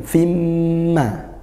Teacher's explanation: dibaca masuk dengan dengung apa yang masuk tanwin atau bunyi tanwin bunyi nunnya itu sudah tidak terbaca langsung melebur atau masuk ke mim ke huruf berikutnya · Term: idgham bighhunah